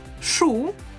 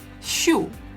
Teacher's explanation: So we have sh, which is always hard, and щ, which is always soft.